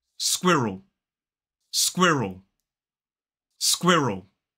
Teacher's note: It's not squirrel, it's squirrel. 2 syllables, the stress falls on the first.